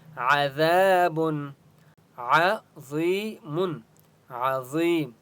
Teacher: ہے عذاب عظیم عظیم ضا یا زر ضی یا مدہ ہے ضا کو ایک الف کی مقدار کھینچ کر پڑھیں گے